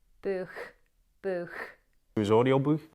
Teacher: it's this aspiration of the plosives K and T in that final position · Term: wet K sound